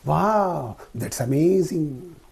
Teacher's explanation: The pitch rises and then falls sharply with the same word or sentence. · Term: rise fall intonation